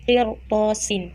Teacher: Jadi dia itu walaupun ada sebelumnya huruf kasroh, sebelum ro-nya huruf kasroh, itu dia itu tidak dibaca tarqiq, melainkan dibaca tafhim karena sesudahnya itu ada huruf isti'la